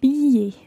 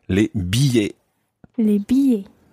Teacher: You don't actually pronounce an L sound in there.